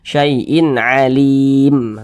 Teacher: panjangnya boleh dua harakat boleh empat harakat hingga 6 harakat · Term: Mad Arit lisukun